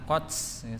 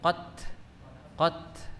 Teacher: huruf ta yang mati atau waqaf itu ada udara yang keluar nat qot ya, ada udara, bukan qots sanes qots tapi qot nah, seperti itu, bukan qots atau s qots bukan c tapi qot nggih, atau dalam sifatul huruf disebut sebagai hamas ya.